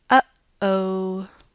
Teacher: So try saying uh-oh, and feel how you stop the air in the middle of that word. Uh-oh. So that stop that you made right there in the middle, that's a glottal stop, and this symbol is what we use to transcribe that.